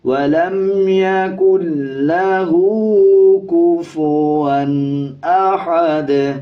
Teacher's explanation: کفواً احد، اس پہ بھی ہا کو باریک پڑھا جائے گا. جب وقف کریں گے دال کے دونوں پیش سائلنٹ ہو جائیں گے اور دال پہ قلقلہ کیا جائے گا